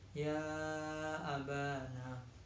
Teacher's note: bacaan mad jaiz munfasil sebab mad bertemu hamzah dalam dua kalimat, panjangnya 2,5 alif atau 5 harokat